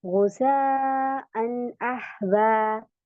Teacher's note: यहाँ पे हमजा है, आहवा, तो हमजा जबर आ लगा है यहाँ पे, तो इसकी वजह से हम यहाँ पे इजहार करेंगे, गुस्सा अन आहवा। यहाँ पे गुन्ना इकफा नहीं होगा, सिंपल आप पढ़ेंगे इसे